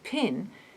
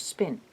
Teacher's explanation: in the first case pin there is a puff of air at the p sound that is not present in the case of spin this puff offer called aspiration is what the superscripted h-shape symbol